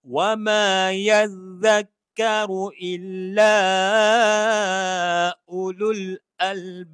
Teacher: Mad arid lukun dan berhenti qalqalah lantunan bunyi be.